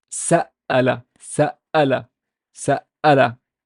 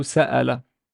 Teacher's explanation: Okay, so again, we emphasize that the hamza is a glottal stop and it's basically a consonant that can be double